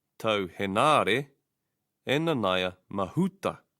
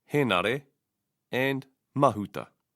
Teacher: The stress should be on the first vowel, he of Henare and ma of Mahuta.